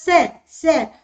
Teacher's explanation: दंत से होता है, दंत पर आकर जीभ लगती है